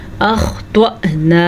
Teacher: خوا کو پر پڑھیں، توا کو پر پڑھیں. حمزہ کے اوپر ساکن ہے تو حمزہ پہ ہلکا سا جھٹکا پیدا ہوگا.